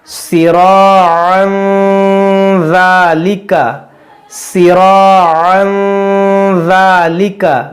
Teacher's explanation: تنوین کے بعد یہ ذال حروف اخفا ہے، یہاں پر ہم غنہ کریں گے